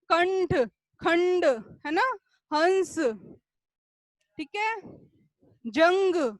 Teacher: उच्चारण करते समय ध्वनि का संचार जो है नाक से होता है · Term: अनुस्वार